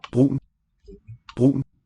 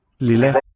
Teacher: there's a little catchy quality in there. Brun. I think it's a thing called stød.